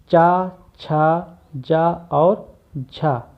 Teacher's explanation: चा, छा, जा और झा, इनको हम स्पर्श संघर्षी वर्ण भी कहते हैं